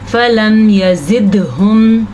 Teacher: फ़लम यज़िदहुम दुआई इल्ला फ़िरारा। फ़लम यज़िदहुम, दाल के ऊपर कलकला करना है।